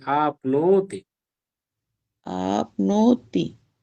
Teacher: ती ह्रस्व है आप और नो दीर्घ है